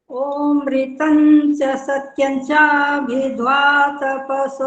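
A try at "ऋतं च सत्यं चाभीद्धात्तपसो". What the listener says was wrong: यार रुक जाओ रुक जाओ, ये ध्वा नहीं है यहाँ, चा भी धा, ये है, ये द के नीचे ध है ये। ऋतं च सत्यं चा भी धा तपसो, त भी डबल है यहाँ पर।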